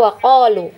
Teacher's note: kalau kita memilih waqaf maka madnya ini tetap dibaca panjang